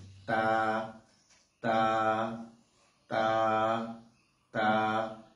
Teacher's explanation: তা জিহ্বার আগা উপরের দুই দাঁতের গোড়ার সঙ্গে লাগাতে হবে। জিহ্বার আগাটা উপরে দুই দাঁতের গোড়া, সামনে দুই দাঁতের গোড়ার সঙ্গে লাগিয়ে তা হরফটা উচ্চারণ করতে হবে